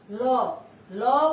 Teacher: ল, ল উচ্চারণের সময় তোমার ল যখন আমরা বলি এটা দাঁতের দাঁতটাকে স্পর্শ করে এবং দুই পাশ থেকে কি এটা যে দুই পাশ থেকে বাতাস বের হয়ে যায়, এই জন্য এটাকে বলা হয় পার্শ্বিক ধ্বনি।